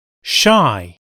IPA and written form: ʃaɪ (shy)